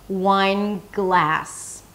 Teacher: I lift the tongue up for the N and then shift immediately to the G.